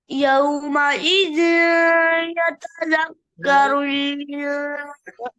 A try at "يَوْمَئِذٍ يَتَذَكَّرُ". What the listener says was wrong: बेटे यहाँ गुन्ना पूरी तरह से दाल या दो जेर वी दाल के बाद या पढ़ो दरमियान में नून नहीं लाओ यौम इजी जी